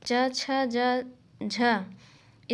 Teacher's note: च, छ, ज, झ स्पर्श संघर्षी व्यंजन हैं